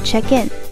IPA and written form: tʃek ɪn (Check in)